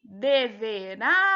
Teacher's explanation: quando a gente pronuncia deverá, a gente percebe que a sílaba tônica é a última